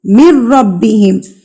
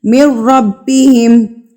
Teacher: مِن ربہم، اس نون کو آپ کیا کریں گے، مدغم کر دیں گے. ٹھیک ہے، نون جو ساکن والا ہوگا اس کو آپ نہیں پڑھیں گے، آپ میم کو ڈائریکٹ را سے ملا کر پڑھیں گے